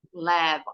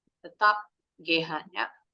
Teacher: Tetap GH-nya berubah bunyi jadi bunyi F.